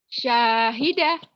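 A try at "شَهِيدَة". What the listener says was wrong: Gak ada yang panjang atuh ah. panjang? Syahidah. Gak ada yang panjang. ada yang panjang. Bukan kalau gak ada yang panjang kayak orang Judas. Syahidah gitu pendek.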